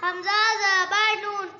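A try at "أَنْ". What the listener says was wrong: نہیں نہیں نہیں یہ نون پر غنہ کرنا ہے. ان.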